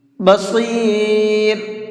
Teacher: صاد کو منہ بھر کے پڑھیں گے